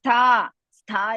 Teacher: ಸ್ಥ ಇಸ್ ಮಹಾಪ್ರಾಣ ಅಂಡ್ ದೀರ್ಘ